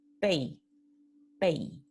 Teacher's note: tenemos la vocal pura o completa en primera posición y la semivocal en segunda posición. Entonces, es un diptongo decreciente, pei, pei.